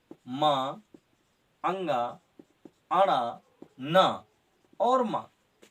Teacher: इनका उच्चारण स्थान नासिका, यानी इनको बोलते समय नाक से आवाज निकलती है, इसलिए ये नासिका वर्ण है।